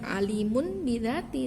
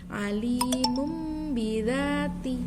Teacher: nun menjadi bunyi mim disertai dengan gunnah, mendengung sedikit dan sedikit samar dalam satu kalimat. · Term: iqlab